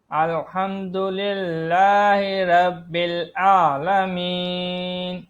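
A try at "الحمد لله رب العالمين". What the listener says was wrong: اب یہاں پر دیکھیں نا کہ آئین کو آپ عالمین پڑھ رہے ہیں، تو یہاں پر آئین نہیں ادا ہو رہا.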